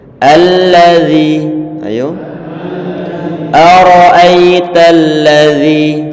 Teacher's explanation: Tidak boleh nanti kita baca o tapi bukan o tapi coba ara'aital ladzi, itu lafaz alladzi, dzalnya tentunya makhrajnya ataupun tempat keluarnya adalah ujung lidah ditempel ujung gigi seri bagian atas.